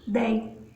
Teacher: Ditongo, ou seja, duas vogais que eu pronuncio numa só abertura